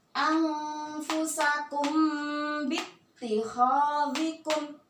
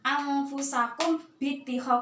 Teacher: cara membacanya disamarkan ya, dimasukkan langsung ke dalam huruf ba-nya dengan dengung yang dibaca 2 harokat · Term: ikhfa syafawi